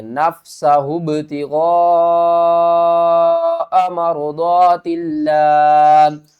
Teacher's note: غین کو 5 الف کی مقدار کھینچ کر پڑھیں گے، ہا کو با سے ملائیں گے، با کے اوپر قلقلہ کریں گے